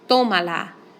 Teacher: I count back three vowels and I put my accent on the o